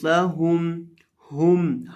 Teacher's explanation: ہا کو حلق کے آخری حصے سے ادا کریں گے